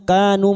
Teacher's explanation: Kanu masing-masing dua harakat kita panjangkan.